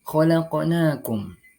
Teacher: Kita mendapati huruf qaf berbaris sukun di tengah-tengah kalimat. Cara membacanya yakni dengan memantulkan huruf qaf tersebut secara pelan, dan hukum bacaan tersebut disebut dengan qalqalah sughra.